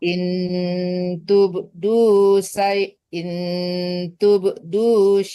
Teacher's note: Jadi enggak ada dengung itu izhar